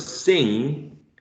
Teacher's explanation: you are pressing the back of the tongue in the velum area or also called soft palate